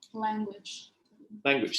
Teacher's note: So the l sound became a n